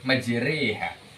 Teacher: membaca di antara fathah dan kasroh. Jadi antara a dan i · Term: imalah